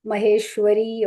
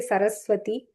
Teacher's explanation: it's like a flat like how we say v it's not w sound it is v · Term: va sound